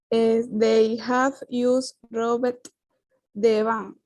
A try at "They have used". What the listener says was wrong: No te olvides, por favor, que no es Robert. Recuerda la T, the sound of the letter T.